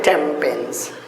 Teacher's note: the gap is filled or the pause is avoided just by introducing M sound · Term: assimilation